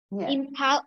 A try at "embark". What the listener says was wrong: Okay, it's not a P, you have to say a B. Embark, it's a B, it's a loud sound, embark.